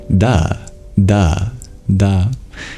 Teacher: If you wanted to make a duh sound, a D, then you'd bring an additional energy, which is your voice. You start voicing as you tap at the same time. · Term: D sound